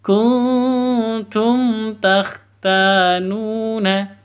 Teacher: nun mati bertemu dengan ta samar siap didengungkan samar disertai dengung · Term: ikhfa Hakiki